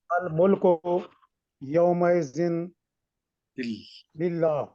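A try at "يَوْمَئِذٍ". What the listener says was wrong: نہیں کل بھی بتایا تھا نا یوم اذن للہ نہیں کہنا اس کو ٹھیک کریں. یوم اذن للہ جی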